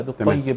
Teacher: اذا وقفنا عليها نبين القلقله